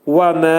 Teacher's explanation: Və mə vəf. Vəf hərfinin məxrəci dodaqlar qönçələnir, ə deyirik. Və mə 2 səs qədər qaldırılacaq.